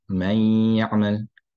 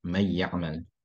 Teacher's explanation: hafs, you'll have may ya'mal with the hunna. Khalaf will do it without the hunna as may ya'mal.